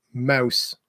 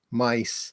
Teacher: They tend to move from these back vowels, these vowels that you pronounce at the back of your mouth, to these, ones that are high in front, like I, all these high sounds.